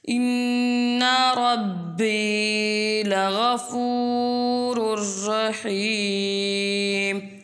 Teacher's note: قلقلہ حروف جب مشدد ہوں ان میں قلقلہ جماؤں کے ساتھ ادا ہوتا ہے، اس لیے یہاں پر قلقلہ جماؤں کے ساتھ ادا ہوگا۔